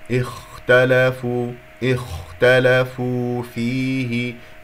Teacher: وإن الذين اختلفوا، اختلفوا بدأت بهمزة قطع مكسورة لأنه ثالث الحرف مفتوح، نكسرها هنا، والخاء هنا يجري فيها الصوت والنفس